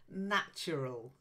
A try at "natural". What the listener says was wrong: natural. Yeah, not al, natural. Often al ending is more of an ul than an al.